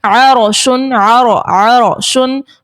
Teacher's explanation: रॉ से पहले देखें हर्फ पर जबर है, तो इस सूरत में भी रॉ को मोटा अदा करेंगे